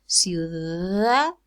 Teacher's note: it's fricative because it's surrounded by vowels, U and then A